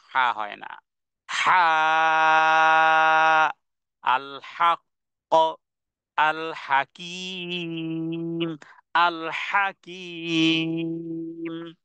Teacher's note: আইন এবং হা এটি হলকের মধ্যখান থেকে গলার মধ্যখান থেকে